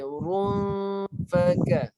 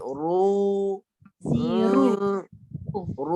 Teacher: Sebab ra-nya masuk hidung terus, tak boleh. Ra ni tak boleh bunyi kat hidung. Ra kat mulut ya. Ru. Ru baru masuk hidung.